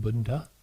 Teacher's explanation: It starts with a labial ba with a short u. And then we run into a duh, a dental duh with no vowel